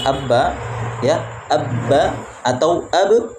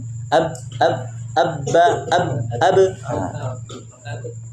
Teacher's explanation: kita mendapatkan suara ba keluar dari kedua bibir